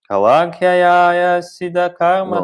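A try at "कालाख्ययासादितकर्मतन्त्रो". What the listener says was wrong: you're putting in an extra syllable. You're putting in an extra syllable.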